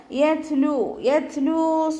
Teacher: ത സുക്കൂനാവുമ്പോൾ കുറച്ച് എയർ പുറത്തോട്ട് പോണ സൗണ്ടിൽ ഉച്ചരിക്കുക